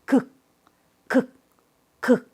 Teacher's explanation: 위에 입천장에 말랑말랑한 부분 쪽으로 올라가요